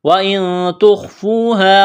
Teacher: نون ساکن کے بعد تا آ جائے تو پھر یہاں پر غنہ کریں گے، آواز ناک میں چھپائیں گے